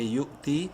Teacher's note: یو جھٹکے سے، واو silent, تا یا زیرتی یا مدہ ہے، تا کو ایک الف کے برابر لمبا کریں گے